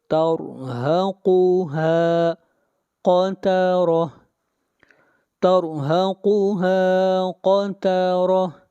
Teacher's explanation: را کو موٹا پڑھیں گے، را سے پہلے زبر ہے. قاف کو موٹا پڑھیں گے.